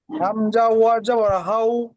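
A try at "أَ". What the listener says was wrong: হাউ বলছেন কেন? হামসা ওয়াও আবার কি হয়? হামসা ওয়াও আবার হাউ না, আউ আউ হয়, আ বলেন।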